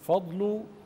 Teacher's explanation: اعتني بالضاد القويه التي جاورت الفاء الضعيفه فلا تفخم الفاء لمجاورتها الضاد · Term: الضاد القوية